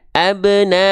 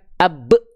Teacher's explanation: Kalau dipantulkan berarti nggak perlu dipanjangkan, makanya 0 harokat. Qalqalah pantulkan si ba-nya.